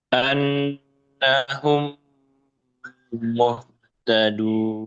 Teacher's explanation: Idgham mimi mim sukun bertemu mim. Ini juga ditahan.